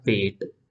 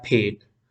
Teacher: जो पी है वो अनएस्पिरेटेड है, और फेट में वही पी जो है वो एस्पिरेटेड है।